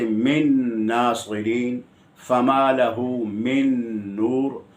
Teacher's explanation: من ناصرین، فما لہ من نور، یہاں نون مدغم بھی ہے اور مدغم فی بھی ہے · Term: نون کا ادغام